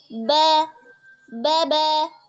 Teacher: Kalau ba dia merupakan huruf yang tipis karena dia hurufnya istifal dan juga infitah ya tipis. Jadi arahkan dia itu memang benar-benar merayap ya terus keluar suaranya ke bawah.